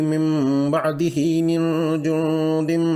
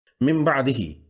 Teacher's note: چونکہ یہ میم کا غنہ ہے اس لیے اس کے لیے ہونٹ ملے ہوئے ہوں گے اور ناک کے بانسے سے غنہ کی بنبناہٹ سنائی دے گی۔ یاد رہے کہ ہونٹوں کو ملانا ہے، بھینچنا نہیں ہے، یعنی سختی سے بند نہیں کرنا۔